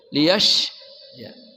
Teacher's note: shin dari tengah lidah